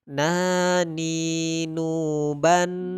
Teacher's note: tempat keluarnya tentu dari ujung lidah dengan langit-langit di depannya agak ke bawah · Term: huruf nun